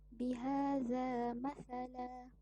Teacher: Iwad bererti ganti, iaitu menggantikan satu baris dari tanwin fathin kepada bacaan mad 2 harakat ketika diwakafkan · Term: mad iwad